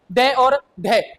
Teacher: उच्छित व्यंजन वे होते हैं जिनके उच्चारण में जीवा हमारे ऐसा महसूस कराती है जैसे वर्णों को फेंक रही हो